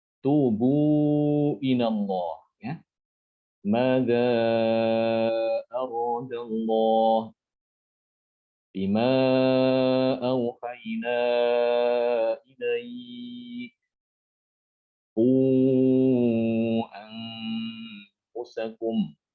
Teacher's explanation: Jadi mad jaiz ini yang munfasil itu dibaca 4 atau 5. Sama dengan mad wajib ya.